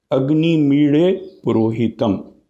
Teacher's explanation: हम ड की तरह उसे प्लोशन भी पूरी तरह से नहीं करते हैं, लेकिन ल की तरह उसे पूरी तरह से लेटरल रिलीज भी नहीं देते हैं, बल्कि प्लोशन भी करते हैं और हल्की सी लेटरल रिलीज भी दे देते हैं।